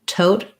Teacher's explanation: Make sure that your O is a diphthong, that you hold it long. The first T, tote, has a puff of air. The last T is unreleased.